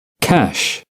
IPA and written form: kæʃ (cash)